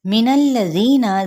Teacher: ذی پہ مد صل بالیا کا قاعدہ، ایک الف یا دو حرکات کے برابر کھینچیں گے